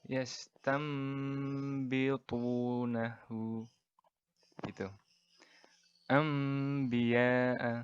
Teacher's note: Jadi dibaca nun mati atau tanwinnya ini menjadi suara huruf mim mati. Dan kadar panjangnya ini sebanyak 2 harokat. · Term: iklab